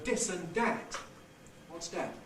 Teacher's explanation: When the is initial, so in words like this and that, you can get, instead of fronting to a fricative, fronting to a evidental, you can get stopping to a plosive